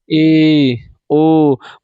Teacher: मुख आधा बंद होता है